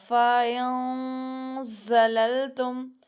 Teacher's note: لام، لام زبر لل، فا ان زلل، تا میم پیش تم، فَإِن زَلَلْتُم، فَإِن زَلَلْتُم، غنہ کرنا ہے، اور غنہ کو موٹا نہیں کرنا، فَاؤں ایسا نہیں کرنا، اب باریک رکھنا ہے غنہ